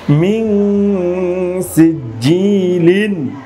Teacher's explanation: নুন সাকিনের পরে সিন এসেছে, এটাও কিন্তু পাতলা হরফ, মোটা হরফ না, এই জন্য এখানে গুন্নাটা আমাকে পাতলা করতে হচ্ছে।